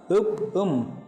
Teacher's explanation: 2 சொண்டுகளும் பொருந்துகின்ற போது வருகின்ற ஒலிகள் ஈரிதழ் ஒலிகள் எனப்படும். உப் உம் என்ற 2 சொற்களும் 2 சொண்டுகளும் பொருந்துவதால் உதடுகளும் பொருந்துவதால் வருகின்றன.